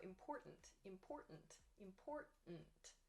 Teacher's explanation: this has like an apostrophe sound almost so important important important we drop the t sound or it sounds very soft